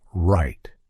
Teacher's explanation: You may expect to hear right, but in typical American English, that final T is less pronounced. Instead, when I pronounce that last T, my tongue simply makes contact at the roof of my mouth without fully releasing the sound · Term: stop T